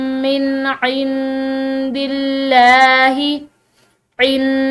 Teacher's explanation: यहाँ पर नून साकिन के बाद दाल हरूफ इख्फा में से है, तो यहाँ पर हमने इसको नून साकिन पर इख्फा करना है। इंदिल्लाही, लफ्ज़ अल्लाह की लाम जो है पिछले हर्फ यानी कि दाल की कसरा की वजह से, दाल के ज़ेर की वजह से जो है ये बारीक पड़ी जा रही है।